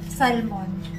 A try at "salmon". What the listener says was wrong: The L is silent.